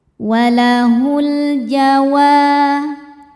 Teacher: Sebab alif lam menghadapi huruf qomariyah yaitu jim. Cara bacanya lam sukun dibaca idzhar atau jelas, idzhar qomari. · Wa hukumnya adalah mad thobi'i dzohiri. Sebab ada alif sebelumnya berharakat fathah. Cara bacanya dipanjangkan dua harakat.